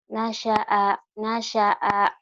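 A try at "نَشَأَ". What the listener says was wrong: Nanya doang yang panjang.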